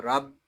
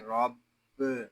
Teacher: با مشدد ہے اس کو جماؤ کے ساتھ ادا کریں گے